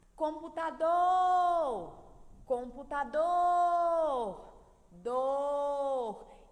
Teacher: o dor é a sílaba tônica da palavra computador. É a sílaba mais forte.